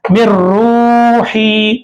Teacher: नून की आवाज नहीं आ रही, नून की आवाज को रा में मिला दे रहे